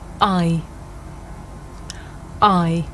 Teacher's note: this is a diphthong a double vowel sound the shape the mouth makes changes from the beginning of the sound to the end it's pronounced I did you notice how the shape of my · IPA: /ai/, /aɪ/